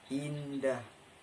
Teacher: vokal depan tinggi tak bunder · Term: vokal depan tinggi tak bundar